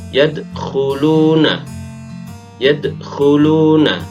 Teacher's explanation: Matinya dal ini asli. Dal salah satu dari 5 huruf qalqalah, maka dal harus dibaca memantul. Namun karena matinya asli bukan karena waqaf, maka masuk pada qalqalah sughra.